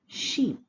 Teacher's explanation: the first phonetic vowel we have here is E, the elongated one, as in the word sheep